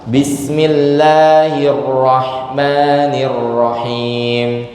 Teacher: tulisan Ar-Rahman, Ar-Rahim itu ada huruf lamnya. Tapi lamnya tidak dibaca. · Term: diidghamkan